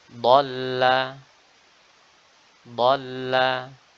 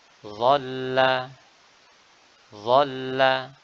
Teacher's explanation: Jadi huruf dhad makhrajnya berbeda dengan huruf dha. Dhad dari tepi lidah Sedangkan kalau huruf dha itu dari pertemuan antara ujung lidah dengan ujung gigi sari yang atas. · Huruf dha dan dha sama-sama punya sifat isti'ala dan sama-sama punya sifat itbaq.